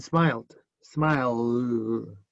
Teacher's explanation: Una D, porque la L vibra.